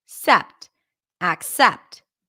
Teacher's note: This word is technically accept with an a as in cat, ac, and then primary stress is on the second syllable